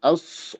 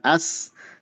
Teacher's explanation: Sodnya tebal. Os bukan as. Kalau as itu sin.